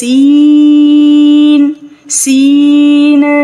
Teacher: سین ادا کرتے ہوئے ناک کے اندر آواز نہیں جائے، سیٹی کی آواز آنی چاہیے